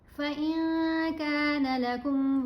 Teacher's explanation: نون کی آواز کو ناک میں چھپا کر بھی پڑھنا ہے اور ایک الف کی مقدار جتنا ٹھہر کر بھی پڑھنا ہے. تو یہاں نون ساکن کے بعد کاف, یہاں نون تنوین کے بعد فا, تو ہم احفا کریں گے, نون کو واضح نہیں پڑھنا.